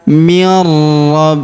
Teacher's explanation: Huruf nun sukun melebur ke huruf ro yang berharakat tasdid · Huruf nun sukun melebur ke huruf ra yang berharokat tasydid ya. Ketika bertemu huruf nun sukun dengan huruf ra yang berharokat tasydid.